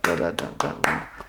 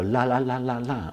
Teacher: It's going to be a dental D